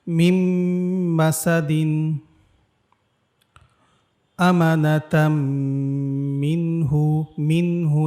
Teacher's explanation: তানভিনের পর মিম আসার কারণে আমরা ঈদগামে বাগুন্নার নিয়ম অনুযায়ী গুন্নার সহিত মিলিয়ে পড়েছি